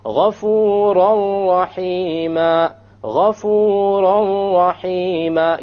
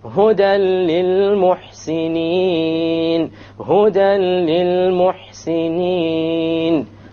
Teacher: you drop the sound of n and you merge what is before with what is after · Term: idgham without ghunna